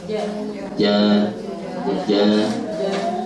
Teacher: kalau di jim itu dia agak di tengah bukan ke ujung kalau di ujungnya di ja ja ja gitu ya ja jangan ja tapi Ja ja agak agak ke tengah.